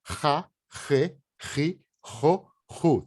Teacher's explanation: tem que arranhar garganta esse som · esse é gutural, ele vem do fundo da garganta